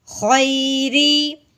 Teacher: را کے نیچے زیر آ جائے اس را کو باریک کر کے پڑھتے ہیں